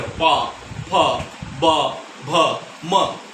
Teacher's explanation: होठों के द्वारा ये सब बोला जाता है। जब हमारे होठ एक दूसरे से मिलते हैं तब इनका उच्चारण होता है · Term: ओष्ठ वर्ग